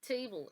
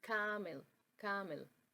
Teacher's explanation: Table. Because it has the dark L and do not pronounce the schwa sound. Table, table, straight into the dark L sound.